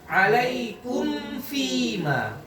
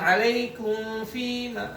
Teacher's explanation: Belum rapat udah langsung geser ke makhraj fa.